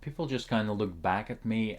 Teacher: notice how the k sound is softened in both looked and back